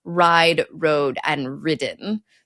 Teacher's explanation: alternate among an E grade, an O grade, and a 0 grade vowel, where the third time the vowel disappears or is reduced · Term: ablaut